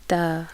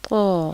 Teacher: تا کے مقابلے میں قا کی آواز موٹی ہوتی ہے. ادائیگی کے لیے زبان جڑ سے اوپر کو اٹھا دی جاتی ہے، جیسے قا، اور تا میں زبان نیچے رہتی ہے، جیسے تا.